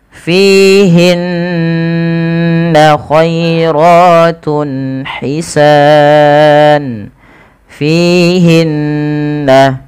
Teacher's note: Panjangkan dua harakat pada lafal fin-nya karena ia ada kasrah bertemu dengan ya. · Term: mad thabi'i